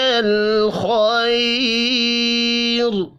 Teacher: را ساکن سے پچھلا حرف یا ساکن ہو تو را کو باریک پڑھتے ہیں